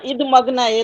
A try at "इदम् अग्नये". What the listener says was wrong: इदम अग्नय, इद हलंत नहीं है, इदम अग्नय, द पूरा है। कोई बात नहीं, वो थोड़ी बहुत इधर हो भी सकता है।